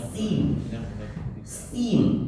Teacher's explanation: Sin itu kecil sekali desisnya keluar.